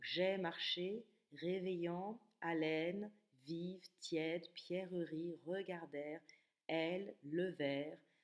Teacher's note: on va avoir essentiellement des voyelles plus ouvertes des a des I et des e